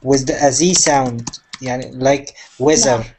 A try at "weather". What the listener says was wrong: No, not weather. No, weather. Yeah. So weather is with a th,